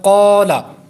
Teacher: الف سے پہلے پر حرف ہے، حروف مستعلیہ ہے، تو یہاں پر الف پر ہو جائے گا